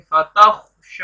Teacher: خا کو موٹا پڑھیں گے اور شین کو لمبا کریں گے